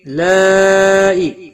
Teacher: مد متصل ہے، 5 الف کے برابر کھینچ کر پڑھیں گے